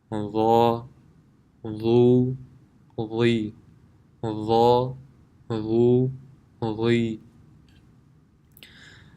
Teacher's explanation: The makhraj of Dha is the tip of the tongue when touching the edge of the upper two front teeth, which is in the same group as Tha and Dhal. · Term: full mouth